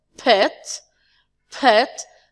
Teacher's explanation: in the word pet the P sound is voiceless